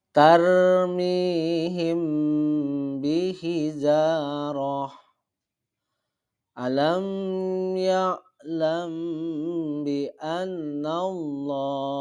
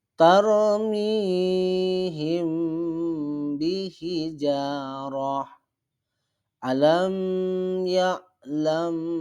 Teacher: dengan suara yang samar antara mim dan ba pada bibir ya kemudian ditahan kira-kira dua harakat atau ketukan Seraya mengeluarkan suara ikhfa dari pangkal hidung maka perhatikanlah contoh sebagai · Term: ikhfaz syafawi